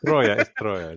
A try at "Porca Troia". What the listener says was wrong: Just roll the R. That's important.